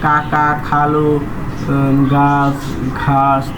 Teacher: ধ্বনি উচ্চারণের সময়ে জীভের পিছনের অংশ উঁচু হয়ে আল জীবভের কাছাকাছি নরম তালুর কাছে বায়ু পথে বাধা সৃষ্টি করে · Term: কণ্ঠ ব্যঞ্জন